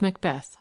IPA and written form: məkˈbɛθ (Macbeth)